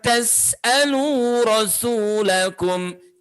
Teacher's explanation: Jangan lupa sin matinya di situ, itu dibaca dengan suara mengalir.